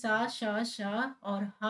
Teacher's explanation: सा श श और हा जो है आपके अघोष वर्ण है